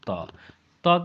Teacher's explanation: तो त का उच्चारण स्थान आपका दंत होता है।